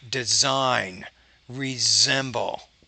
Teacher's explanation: a lot of times when the s is in between two vowel sounds it's more of a z